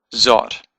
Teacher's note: here we have the Aleph having a oh sound from the holem